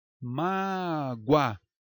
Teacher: E em mágoa, o O representa a semivogal U.